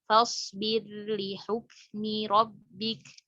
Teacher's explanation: Harusnya ro-nya dijelaskan kalau diidharkan ya, kalau di riwayat Hafs.